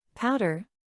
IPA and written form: ˈpaʊdər (Powder)